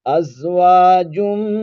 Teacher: نون تنوین کے بعد میم آ جائے تو وہاں پر نون تنوین کو میم میں ملا دیتے ہیں اور غنہ کریں گے